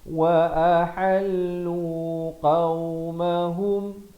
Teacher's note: wa a di pangkal kerongkong, ha di pertengahan kerongkong